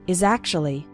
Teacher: you can see that the words is and actually kind of blend together